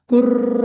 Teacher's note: जीभ अशी नुसती थरथर करते म्हणजे व्हायब्रेट होते